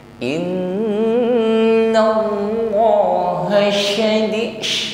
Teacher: ada bunyi dengung yang keluar dari al khayshum dari rongga hidung. Adapun gunnah di sini gunnah akmal, yaitu dengungnya paling sempurna ya.